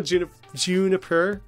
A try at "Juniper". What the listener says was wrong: It's pronounced Juniper. Not June-iper.